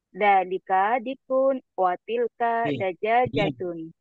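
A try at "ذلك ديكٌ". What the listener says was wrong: Di panjang. Zalika dikun.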